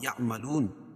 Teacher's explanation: یہاں مد عارض وقفی ہوگا، اس میں طول، توسط، قصر تینوں جائز ہے